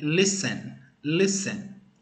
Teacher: Se você perceber, não tem ali, aquele T não foi pronunciado.